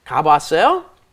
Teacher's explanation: when you put two ahs up next to each other, one, of course, disappears because you can't pronounce together without a consonant in between